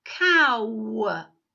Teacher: The beginning of the speech sound, the beginning of the phoneme, is different than when we end it. The last part of it sounds like one of the speech sounds we used in the word penguin, the w speech sound